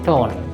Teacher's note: আর is not pronounced here, আর এখানে উচ্চারণ হবে না